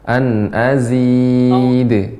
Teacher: Jadi dia pembacaannya seperti d tapi dia cepat. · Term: memantul